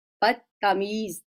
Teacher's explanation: تا ہم نے بولا, دال کو اس کے ساتھ مدغم کر دیا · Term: ادغام